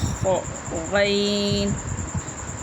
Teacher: حلق کے شروع سے جو منہ کی طرف ہے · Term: حروف حلقیہ